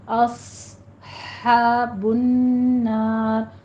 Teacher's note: صاد پہ آپ نے سیٹی کی آواز دے کر آنی ہے، صاد کو پر پڑھنا ہے